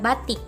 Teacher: Vokal I tinggi bawah depan tak bundar pada kata batik.